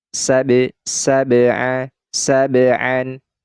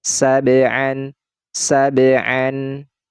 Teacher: Nah jadi dipantulkan ya huruf ba ini karena dia dalam keadaan sukun atau mati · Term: Qalqalah sugro